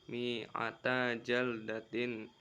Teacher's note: ada ikhfa Hakiki karena hukum karena huruf ta tanwin bertemu Jim cara bacanya dengung satu atau satu setengah Alif